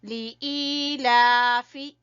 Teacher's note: لام کو ہم نے چھوٹا پڑھنا ہے، اس کے نیچے زیر ہے اور ای کو کھینچیں گے یا مدہ کی وجہ سے، اور لام کے اوپر کھڑی زبر ہے، اس کو کھینچیں گے۔